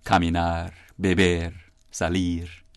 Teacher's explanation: In Spanish, of course, there are many words, all the infinitives, caminar, beber, salir, and so on. They emphasize the last syllable